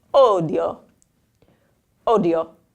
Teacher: now we have that enunciated io sound, so don't blend them anymore